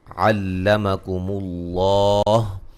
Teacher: مشدد پہ غنہ ضروری ہے، ما الف مدہ ہے، علمکم اللہ لفظ اللہ کو خوب موٹا ادا کریں گے